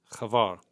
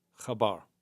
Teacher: Begins with a chet, and then is followed by bet without the dagesh, and therefore it has the v sound